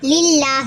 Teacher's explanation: அல்லாஹ்வுடைய லாமுக்கு முன்னாடி ஜேர் இருக்கு அப்ப இது என்னது இது மெல்லினமா ஓதணும்